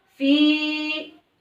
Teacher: Fi ini juga mat tabi'i. Cara bacanya dibaca panjang 2 harokat.